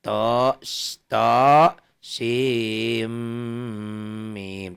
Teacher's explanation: Tuh sinnya jadi bunyi m, sim, mim diidghamkan. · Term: idgham bigunnah